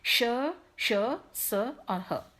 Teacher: तो इन वर्णों के उच्चारण में हमारी जो श्वास वायु है तेज गति से बाहर निकलती है हमारे मुंह से, और एक सीटी जैसी, विस्लिंग जैसी साउंड होती है, इसलिए इन्हें हम ऊष्म कहते हैं।